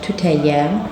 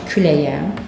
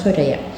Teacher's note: Çünki milli mənşəri sözlərdə söz sondakı k hərfi sait gəldikdə y səsinə çevrilir. Y hərfinə və y səsinə çevrilir. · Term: k y əvəzlənməsi